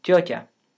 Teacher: now look at the word jyota both t's are palatalized · Both T's are palatalized. The mid-vowel, a, which is almost always lax in Russian, between two palatalized consonants is pronounced tense. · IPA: [ˈtʲotʲə]